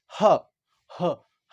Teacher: हा भी कहां से उत्पन्न हो रहा है, कंठ से।